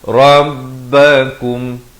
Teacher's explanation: izhar syafawi diwaqafkan dengan jelas, jangan dipanjangkan